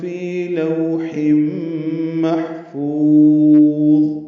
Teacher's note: فی آئے مدہ ہے، 2 حرکات لمبا ہے. لوح میں لو وولین ہے، ہونٹ کو آگے لائیں گے، یہ زیادہ لمبا نہیں کر سکتے اس کو.